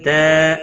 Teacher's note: الف مدہ ہے، ایک الف کے برابر کھینچ کر پڑھیں گے